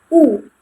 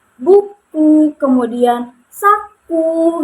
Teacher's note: Nah, U ini ee lidah itu berada di tinggi atas dan tetap menggunakan lidah bagian belakang. Jadi, oposisinya berada di tinggi atas dan menggunakan bagian belakang.